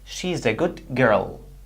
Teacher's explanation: The D sound changed to G sound.